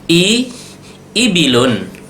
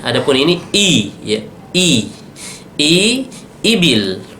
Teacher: i itu di tenggorokan yang ujung, jangan sampai bilang i.